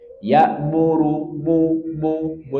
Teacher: Nun dan mim yang berharakat dia ada dengungnya tetapi tidak kelihatan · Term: sangat kurang sempurna